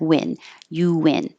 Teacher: I added the invisible W the intrusive W because you're going from a rounded U to an unrounded in